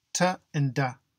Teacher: These are the stops. But the air builds up and then we let it burst through, called the plosive